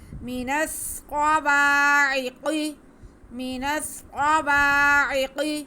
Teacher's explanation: مینسقوا عقی، عین حروف ہلکی، حلق کے سینٹر سے ادا ہوگا. قاف کو ہم موٹا کر کے پڑھیں گے کیونکہ حروف مستعلیہ ہے